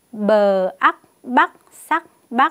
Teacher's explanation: tiếng Bắc có âm đầu bờ vần ác và thanh sắc